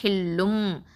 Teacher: அந்த ஹில்லுன் இருக்கக்கூடிய அந்த நூன் இருக்குது பார்த்திங்களா, அந்த நூனை என்ன பண்ணுவோன்னா அதை மறைச்சி நம்ம மீமாக மாற்றுவோம். அப்போது மாற்றுதல் தான் இக்லாப் அப்படின்னு அர்த்தம்.